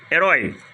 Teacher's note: oxítono terminada com ditongo aberto oi